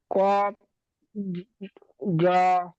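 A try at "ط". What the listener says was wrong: কফ জ কেন, ওটা ত। জর উপরে ত জ লেখা এক, তর উপর নোক্তা থাকে না, জর উপর নোক্তা থাকে। ত জ লেখা এক, নোক্তা নোক্তা পার্থক্য হয়ে গেছে, এটা ত।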